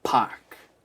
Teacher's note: It's inbuilt in your natural accent to open up more into that ah sound. Park is a very distinct kind of American vowel because we're not opening up the mouth so much, and it's not coming from the back of the throat, but rather from the center.